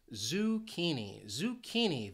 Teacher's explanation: This word has 3 syllables and the stress is on that second syllable, that key.